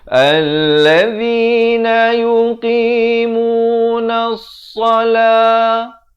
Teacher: alif lam syamsiah, lamnya tidak dibunyikan